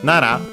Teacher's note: Technically, Nara is accented on the first syllable